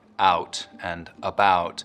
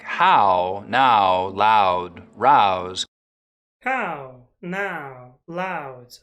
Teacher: of the diphthong in words like out and about so that instead of it starting very open it's starting from somewhere in the middle of the mouth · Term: canadian raising